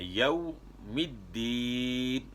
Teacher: واو ساکن سے پہلے زبر ہو اس کو واو لین کہتے ہیں، اس کو نرمی کے ساتھ آپ نے ادا کرنا ہے